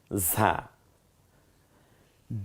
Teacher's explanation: ঝিঝি আওয়াজে বাতাসটা বেরিয়ে আসবে, জিব্বাটা খানিকটা পাতলা হয়ে যাবে ভেতরে